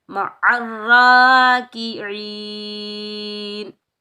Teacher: وقف کی صورت میں یہ مد بنے گی مد عارض لی سکون، اس کو ہم 2، 2.5، 3، 4، 5 الف کی مقدار تک کھینچ کر ادا کر سکتے ہیں